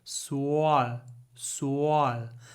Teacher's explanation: The vowel is just the sound that comes out as we move from w to l.